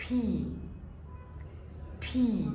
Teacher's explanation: مش فكرة اني بعلي صوتي او بوطي صوتي وانا بقول اللتر، الفكرة كلها في الهواء اللي خارج من بقي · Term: voiceless letter